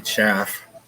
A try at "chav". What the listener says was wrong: Hold on, say that again. It sounded like you said chaff. A chav. Chav.